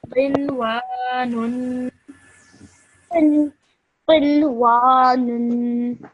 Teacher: So that's why alif madda, you stretch the wa sound out for 2 seconds